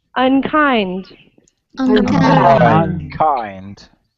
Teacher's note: the stress comes in the second syllable